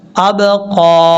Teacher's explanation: یہاں با میں قلقلہ آئے گا یعنی باؤنس